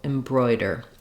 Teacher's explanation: we have just a reduced short ER or dur in the final syllable embroider you might find it helpful to start on the stress